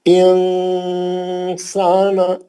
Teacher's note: آپ پورا اچھا غنہ، پورا 2 سے 3 حرکت کا غنہ کرنا اخفا کا